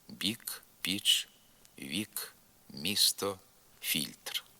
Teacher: лише перед звуком і губні трохи пом'якшуються